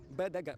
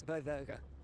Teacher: eram faladas mais como no Brasil, b, d, g, oclusivos. E não como em Portugal, onde elas são fricativizadas, b, d, g. Como o particípio, no Brasil se fala comprado, em Portugal, comprado.